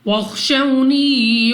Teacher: واو ساکن سے پہلے زبر واو لین بغیر کھینچے بغیر جھٹکا دیے پڑھیں گے، · خوا مستعلیہ میں سے ہے دوبارہ موٹا پڑھیں گے، یعنی منہ اور آواز کو کھول کر، واو ساکن سے پہلے زبر واو لین بغیر کھینچے بغیر جھٹکا